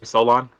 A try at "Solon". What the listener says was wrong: So on. You said Solar, yeah. There's no L. There's no L. So on and so forth. Yeah, that's an easy way to remember it.